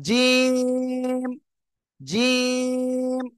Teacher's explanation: শক্ত করে উচ্চারণ হবে তিন আলিফ টান হবে